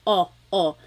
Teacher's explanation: Sometimes I think of it like having a ball in your mouth. Your tongue gets kind of pushed back and down a little bit and the inside of your mouth is open and wide.